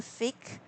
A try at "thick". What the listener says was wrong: Thick. Sorry, the TH sound.